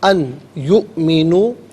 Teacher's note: نون ساکن کو یا کے ساتھ ملائیں گے، یا کی آواز کو غنّے کے ساتھ ادا کریں گے، یہاں یرملوں کا جو قاعدہ وہ اپلائی ہوگا، اور حمزہ ساکن ہے، جھٹکے کے ساتھ پڑھیں گے۔